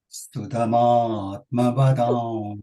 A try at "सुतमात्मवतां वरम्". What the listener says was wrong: Sutam, sutam, not stu, su.